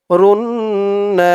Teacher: তাসদিওয়ালা নুন ধরবে ওয়াজিব গুন্না হবে নুন ধরছে র নুন পেশ রুন নুন আলিফ জবর না রুন্না